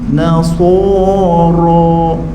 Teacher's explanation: ra sifat dia tebal, ra sifat dia getar. Ra sifat dia lencong.